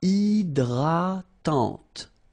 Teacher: H is not existing, and then this Y is pronounced like I.